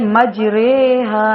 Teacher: امالہ کے معنی جھکانا ہے، یعنی الف کو یا کی طرف اور اس سے پہلے زبر کو زیر کی طرف مائل کر کے پڑھنا